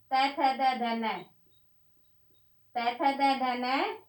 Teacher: त थ द ध न ये दांतों के स्पर्श से बोले जाते हैं